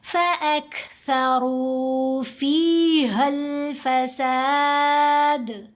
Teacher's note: دال کے اوپر کلکلا آ رہا ہے، ساکن پڑھا جا رہا ہے نا اس وجہ سے